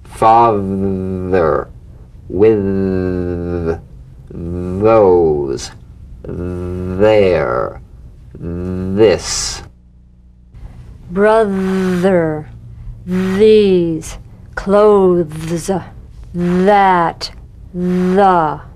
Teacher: The voiced tongue point to teeth fricative th. The vibrant sound of the voice th has a quality much like that of the v. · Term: voiced th, voiced TH